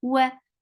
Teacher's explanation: Wa for wow, circle your lips. To pronounce wow, circle your lips. For fatha, open your jaws. The sound is short.